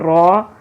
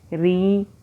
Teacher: را زبر را، یہ را موٹی آواز نکلی، اور را زیر ری یہ باریک آواز، تو زیر جہاں آ جائے را کے نیچے اس کو ہم باریک پڑھتے ہیں۔